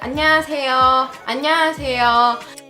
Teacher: When that O or the yo sound is at the end of the word, then you can pronounce it a little bit more relaxed. For example, it sounds a little bit weird if you say 안녕하세요 like that.